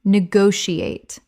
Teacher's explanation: Five syllables with the stress on the second.